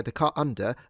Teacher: there are some people who might just put a little glottal stop in there, the car under, and don't actually end up pronouncing the R